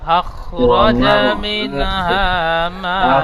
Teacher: এই মিমটি মধ্যে মুত্তাসিল 3 আলিফ টান দিয়ে পড়তে হবে, এখানে বেশি করে টান দেবেন